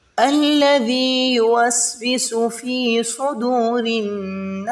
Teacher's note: فی کو ایک الف کی مقدار میں کھینچیں گے کیونکہ یہ ساکن ہے